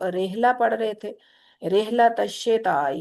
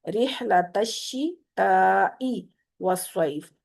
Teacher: जेर को ई की आवाज से पढ़ा करें, ए की आवाज से मत पढ़ा करें, बारीक रखा करें जेर को।